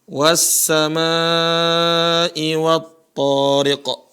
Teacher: Nah, di sini ada huruf sin. Jadi dia melebur ke huruf sin, ya. Tadi tidak terbaca huruf lamnya. Nah, lam yang tidak terbaca ini namanya idgham.